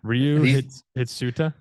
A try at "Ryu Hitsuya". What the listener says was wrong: That's not a T, that's a Y. It's Hitsuya. Ryu Hitsuya. it's a Ryu Hitsuya 21.